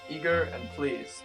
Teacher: assonance with eager and fleas that both have the long e sound in it